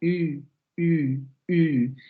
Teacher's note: esta es la anterior cerrada labializada, la U, U, U.